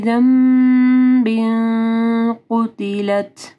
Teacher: پھر تنوین ہے، اس کے بعد قاف ہے تو یہاں پہ اخفا غنہ ہوگا، قُتِلَت تا کے اوپر ہمز ہوگا۔